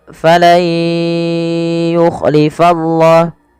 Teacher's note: Ini nunnya masukkan ke huruf ya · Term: idgham